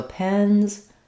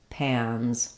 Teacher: I call it the black cat vowel. The difference between pens and pans is that for pans, I'm opening a little bit more.